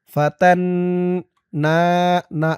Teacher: ফাতান তা দিয়ে নুন ধরবে, ওয়াজিব গুন্নাহ। হরকতের পরে নুনের উপর তাসদিদ।